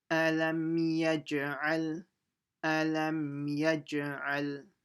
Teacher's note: jim is a qalqal letter. So you have to make an echo sound. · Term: qalqala